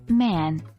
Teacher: M, like the M in man, pronounced by closing the lips